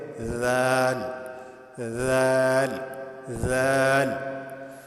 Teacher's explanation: ذال ذال. زبان کی نوک جب اوپر والے دانتوں کے ساتھ لگے تو اس سے ذال ادا ہوتا ہے